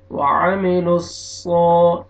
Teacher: वाव मद्दा, वाव जज़म से पहले पेश है, आपने नून को खींचना है, आइन को अपने मखरे से अदा करना है। वामी, लाम को सौद शद्दा के साथ मिलाएंगे और सौद को मोटा करके खींचना है आपने। वामिलुस्सो, ताकि सीन में आपका आवाज मिक्स ना हो।